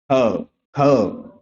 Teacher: ध्यान से अगर आप महसूस करेंगे तो जो ख शब्द है ये आपके कंठ से उत्पन्न होता है